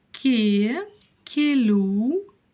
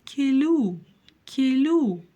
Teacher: л произносится мягко Но дальше всё-таки идёт буква у а не буква Ю